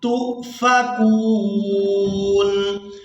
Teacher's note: تا کو حمزہ ساکن کے ساتھ ملائیں گے تو جھٹکے کے ساتھ ادا کریں گے